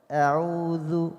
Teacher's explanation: إذن الهمزة تخرج من أقصى الحلق إذن هكذا إذن ثم ننتقل إلى حرف آخر، همزة من أقصى الحلق، ثم العين من وسط الحلق، ثم الذال من طرف اللسان